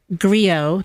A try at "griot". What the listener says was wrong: the T is silent, first of all.